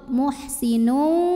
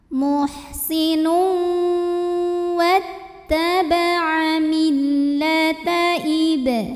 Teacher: Kemudian ada hukum tajwid namanya idgham bi gunnah karena ada tanwin dhammah yang menghadapi huruf waw, maka tanwinnya dimasukkan ke waw. Muhsinu disertai bunyi dengung